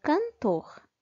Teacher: na palavra cantor, a sílaba mais forte é a sílaba tor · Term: sílaba tônica